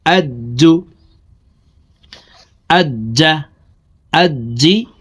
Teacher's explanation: জিম হরফকে জিব্বার মধ্যখান থেকে উচ্চারণ করব